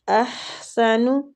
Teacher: حا وسط الحلق سے